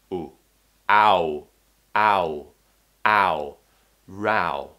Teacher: We're starting with an a, and then we move to a round shape. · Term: ow diphthong